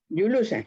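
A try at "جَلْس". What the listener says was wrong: Jalsun. Lam lah. Jala. La tu lah tengah kan. So matikan yang tengah.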